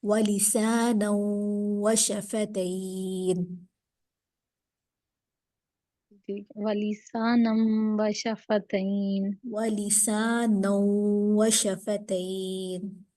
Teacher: اب یہاں پر تنوین ہے اور تنوین کے بعد حروف یرملون کے 6 حروف میں سے واو آ رہا ہے، تو یہاں پر ادغام مع الغنہ ہوگا. تو یہ وہی غنہ ہو رہا ہے یرملون والا ادغام مع الغنہ.